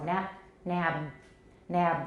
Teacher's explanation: So for this situation, where we have an unreleased voiced final stop, we have a little rumble down here of voicing.